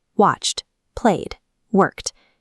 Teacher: You don't say watched or played. You drop the vowel sound entirely, creating a hard T or D sound.